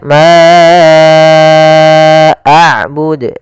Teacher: Kemudian ma a'bud, di sini ada bacaan mad jaiz munfasil, yaitu panjangnya kita harus panjangkan 4 harokat